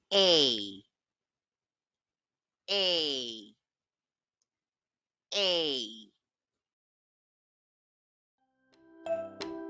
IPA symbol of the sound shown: eɪ